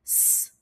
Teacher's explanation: When you make the s sound, place your hand on your throat. You will notice that there is no vibration. This is because the s sound is an unvoiced sound.